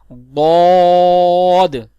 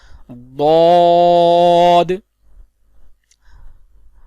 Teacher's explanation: اس کا مخرج ہے زبان کی کروٹ اور اوپر کی داڑوں کی جڑ سے ادا ہوتا ہے، جیسے ضاد، یعنی زبان کی سائیڈز اوپر کی داڑوں کی جڑ سے لگاتے ہیں، جیسے ضاد۔